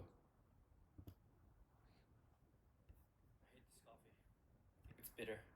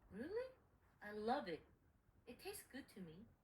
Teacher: please notice the opposing opinion is stressed that is hate versus love bitter versus good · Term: contrastive stress